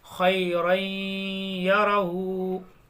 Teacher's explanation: देखिए तनवीन के बाद में यह आ गया तो गुन्ना होगा। खाया ज़बर खई, राया ज़बर रई, खई रई, या ज़बर या, खई रैया, रा ज़बर रा, खई रैया रा, हा उल्टा पेश हु, खैरन यरहु।